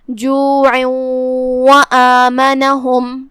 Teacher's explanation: یہ تنوین کو واو میں داخل کر کے غنہ کے ساتھ اور تشدید کے ساتھ یہ حکم کو ادا کریں گے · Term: ادغام